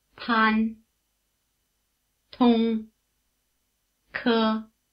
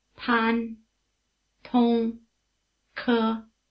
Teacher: Chinese P, T, and K sounds are very strongly aspirated. · The initial consonant sounds are more explosive than their English equivalents. You might also say they're breathier.